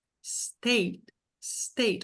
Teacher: State, com o T quase mudo ali no final, né? Com stop. Stop T, tá bom? É uma sílaba só.